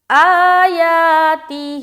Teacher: اس میں 3 جگہ کھینچنا ہے اور ایک جگہ بغیر کھینچے پڑھنا ہے، وہ ہے تا. تا کے نیچے زیر ہے، اسے نہیں کھینچیں گے.